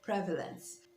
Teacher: Prevalence and not prevalence. Notice that the stress is on the first syllable, prevalence.